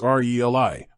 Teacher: the actual pronunciation is re Li with the emphasis on the first syllable think of it like relative or relevant the stress is key